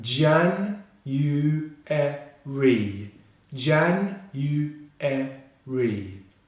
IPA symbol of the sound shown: ri